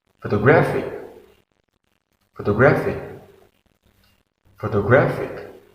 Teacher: In photographic, there are four syllables, and we put the stress on the third syllable.